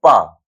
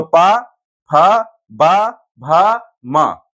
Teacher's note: पा बोलने में दोनों होठ हमारे लग रहे हैं, चिपक रहे हैं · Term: ओष्ठ